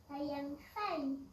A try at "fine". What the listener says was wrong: C'est pas fine, fine, avec un N de nénuphar.